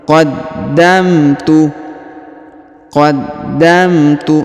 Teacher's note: huruf da ditahan dan ditekan karena berharakat tasdid